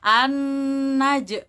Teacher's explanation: Nah, di situ ada idgham syamsiyah atau biasa juga kita bilang alif lam syamsiyah, yang mana ada nun tasydid di situ. Kita harus tekan, bisa juga kita bilang gunnah, harus kita dengungkan, kita tahan.